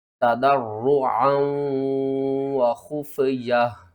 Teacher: عین کو آپ نے حلق کے درمیان والے حصے سے ادا کرنا ہے